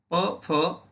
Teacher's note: खालच्या व वरच्या ओठांचा उपयोग करून जे वर्ण आपण उच्चारतो त्यांना ओष्ट्य म्हणतात